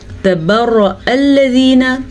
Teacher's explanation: را کو ہم نے پر پڑھنا ہے، را پہ زبر کی وجہ سے